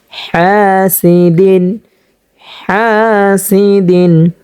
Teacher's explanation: হাটা আমরা উচ্চারণ করব দুই নাম্বার মাখরাজ হতে হলকের মধ্যখান হতে · হ্যাঁ, এখানে একালিফ পরিমাণ টানতে হবে, জবরের বাম পাশে খালি আলিফ আসার কারণে মধ্যে তবাই হয়েছে। এবং হাটা আমরা উচ্চারণ করব 2 নাম্বার মাখরাজ হতে, হলকের মধ্যখান হতে